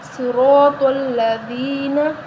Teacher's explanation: دال کو نرم پڑھا جائے گا، دال کے آگے یا مدہ ہے تو اس کو بھی ہم ایک الف کے برابر لمبا کریں گے ، ٹھیک ہے۔ صراط الذین، دال کو نرم کریں، صراط الذین